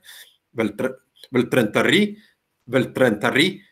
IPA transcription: vĕltrentăr'ri